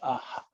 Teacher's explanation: visarga, you should understand, it's an echo of the vowel with which it follows. If it's a, it becomes aha.